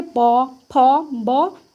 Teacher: होठों का स्पर्श करना अनिवार्य है। जब तक होठों का स्पर्श नहीं होगा तब तक आप बोल नहीं सकते। · प वर्ग मतलब होठों से स्पर्श करते हुए इसको बोला जाता है। तो प आप बोल के देखिए, प, फ, ब, तो क्या होता है, होठों का स्पर्श करना अनिवार्य है।